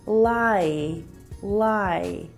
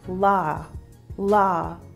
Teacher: Lie, lie. However, in some South African dialects, you might hear this change to a monophthong, which is one vowel sound. So this might sound like la, la.